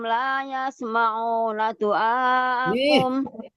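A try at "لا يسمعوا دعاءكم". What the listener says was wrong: Yasmauna enggak ada nunnya, yasmauna. Enggak ada nunnya, la yasmau aja.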